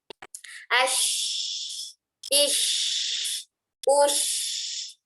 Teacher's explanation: huruf shin keluar makhrajnya dari tengah lidah menempel ke tengah langit-langit atas, tidak menggunakan gerakan bibir